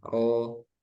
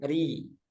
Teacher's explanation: ketika ro fathah, ro, ketika ro domah, ru, ini tebal. Ketika kasroh, ri, nah ini kan tipis